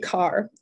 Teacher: don't pronounce their R's